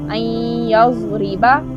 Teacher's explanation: इस रा के नीचे क्या है? कसरा है, तो उस रा को बारीक पढ़ते हैं।